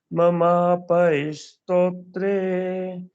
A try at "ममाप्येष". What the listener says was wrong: नहीं है, पा पूरा नहीं आधा है। ममापे, पा को आधा कर लो, पे कर दो। पा को पे स। चलो ठीक है, कई कई जगह का दोष होता है, उसलिए भी थोड़ी आ जाता है। तो ममा पेश स्तोत्रे, ममा पेश, है